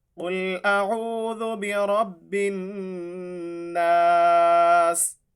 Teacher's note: سین جو ہے وہ سیٹی والے حروف میں سے ہے، اس لیے یہاں پہ تھوڑی سی سیٹی کی آواز آئے گی